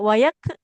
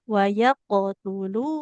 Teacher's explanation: Huruf qofnya kalau sukun harus memantul